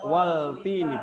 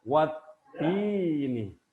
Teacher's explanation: Kalau alif lam syamsiyah, maka alif lamnya hilang. Alif lamnya tidak terbaca.